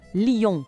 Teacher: A escrita é bem parecida com o português, mas a pronúncia tem aquele toque nasal francês.